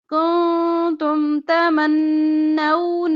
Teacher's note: کہ ہلا کے پڑھتے ہیں، جھٹکا دے کر قد وَلَقَدْ كُنْتُمْ نون ساکن کے بعد تا ہے تو اخفا